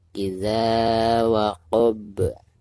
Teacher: Perhatikan di ujung kalimat ini atau di ujung ayat ini ada huruf ba yang merupakan salah satu daripada huruf qalqalah. Maka ketika diwakofkan itu suara huruf ba-nya harus dipantulkan. Bahkan dengan pantulan yang lebih jelas karena posisinya ada di ujung dan dihukumi qalqalah kubro.